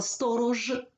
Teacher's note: сторож теж вимовляється чітко немає оглушення